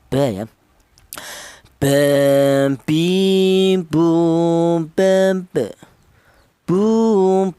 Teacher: Huruf ba ini keluarnya huruf berasal dari kedua bibir yang rapat